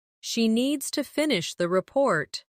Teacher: Stress needs and report. And let the small words fall quietly.